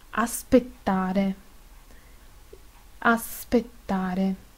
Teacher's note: Es sorda también con consonante sorda.